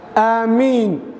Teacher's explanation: madku waa madu dabiici miimkaasina mushaddad maaha